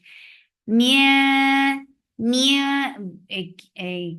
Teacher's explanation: Mia, mia, say this kasra sound first and then bring in ikhfa, and ikhfa is hiding the sound of noon, and you're keeping it, you're keeping the tongue straight because this is light ikhfa